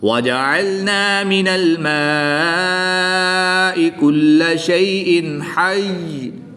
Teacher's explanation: دو زیر کو وقف کی حالت میں ساکن کر دیں گے اور تشدید کو یہاں پر باقی رکھیں گے۔